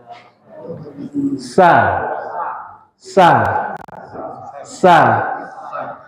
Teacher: ya kalau Sin dan Zai enggak kita angkat kita datarkan karena di dalam Sin dan Zai itu terdapat sifat istifal merendahnya lidah menjauh dari langit-langit · Sin dan zaai sama sama persis makhrajnya ujung lidah dengan gigi seri bawah